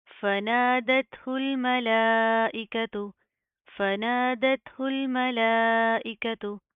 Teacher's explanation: لام کے اوپر کھڑا زبر ہے، مد ہے، لمبا کریں گے، کھینچ کر پڑھیں گے